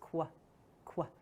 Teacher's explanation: Q actually represents two sounds next to each other, the k sound and the w sound together.